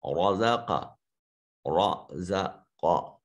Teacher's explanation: را کے اوپر چونکہ فتح ہے اس لیے را مفخم موٹا اور پر کر کے ادا ہوگا